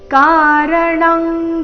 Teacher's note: ಅನುಸ್ವಾರದ ಉಚ್ಚಾರಣೆ ಕ ವರ್ಗದ ಅನುನಾಸಿಕದ ರೀತಿ